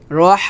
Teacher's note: আমরা হামস করব অর্থাৎ বাতাস বের করব চিকন করে